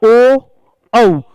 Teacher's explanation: देखिए जब हमने उच्चारण किया ओ औ तो होठों का यूज भी हुआ और कंठ से आवाज भी आई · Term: कंठोष्ठ्य